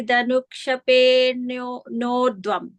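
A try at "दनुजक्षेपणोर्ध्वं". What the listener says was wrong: No, I think you're also missing the ja again. Danuja, separated there. Danuja kshepenordhvam.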